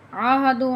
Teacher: اذا عاہدوا، عین کو اور حمزہ کو ظاہر کر کے آپ نے پڑھنا ہے۔ عاہدو، عین جو ہے حلق کے اندر سے نکلے گی اور اس کے اوپر کھڑا زبر پڑھا جائے گا۔ حمزہ کے اوپر جب کھڑا زبر آتا ہے تو حمزہ کی آواز میں اور عین کی آواز میں فرق رکھ کر پھر ادا کریں اس الفاظ کو۔